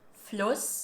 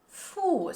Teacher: this has a long stretched oo sound